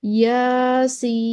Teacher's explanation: تو مد لازم حرفی مخفف ہو گیا، طول دیں گے اور یہ 6 کاؤنٹس ہوگی